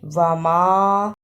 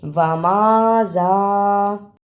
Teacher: میم پر زبر لیکن الف مدہ ہے یہ، اس لیے اس پہ تھوڑی سی دیر لگانی ہے۔